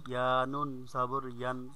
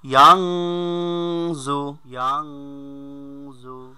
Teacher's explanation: বানানোর সময় ইয়ান হবে আর রিডিং এর সময় ইয়াং হবে, কারণ নুন সাকিনের পরে জ আসলে আমরা জানি কি নুন সাকিনের পরে জ আসলে এক ফার গুন্না হয়, অনিষ্কারের ন্যায় পড়তে হয়।